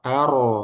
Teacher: ketika fathah roknya jangan tipis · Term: tebal